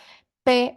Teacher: Fíjense que cuando decimos P, si se pone la mano frente a la boca, van a sentir un leve aire a la hora de pronunciar la P que sale como con mucha fuerza, como un disparo · exista un cierre total del paso del aire que luego sale con un gran impulso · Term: oclusivos